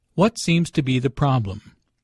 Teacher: Notice that the intonation falls at the end of the question. The doctor wants information, not a yes-no answer.